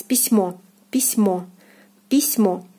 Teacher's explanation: O is stressed here and is pronounced as in the alphabet as O. · When stressed, you read it like it is in the alphabet, so the sound is O. So when you know that the syllable in the word that you are learning, so when this syllable is stressed and in this syllable the vowel is O, then it is pronounced as in the alphabet as O.